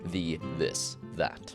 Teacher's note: the voiced dental fricative th